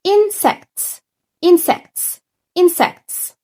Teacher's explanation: يبقى وأنا بقرأ الكلمة دي الجزء الأول أو المقطع الأول سناني قريبة من بعض، ولكن المقطع التاني بقي بيبتدي يتفتح.